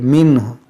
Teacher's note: अब यहाँ पर क्या है, मिन्ह, रुकेंगे तो इसको हा को भी साकिन करेंगे, मिन्ह, और यहाँ नून साकिन के बाद हा है तो यहाँ पर इजहार करेंगे